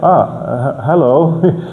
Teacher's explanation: yeah, that's a downward inflection